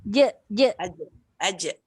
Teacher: Jim tak boleh bunyi angin. Dia tak boleh lepas kharaj. Dia tidak ada angin langsung.